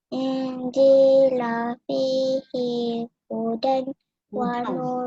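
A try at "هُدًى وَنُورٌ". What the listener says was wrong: Masukkan waw tu ma'al guna, idgham ma'al guna, hudau. Wa nuru, dengung ya, wa nuru.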